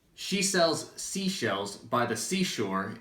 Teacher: the trick is separating the s and sh sounds, which can often get mixed up when you try to say it quickly